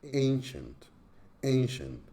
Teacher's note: Ancient is a two-syllable word with the stress on the first syllable